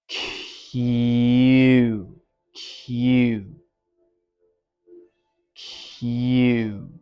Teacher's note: exhale a little bit between the unvoiced plosive and the voiced semivowel y for yellow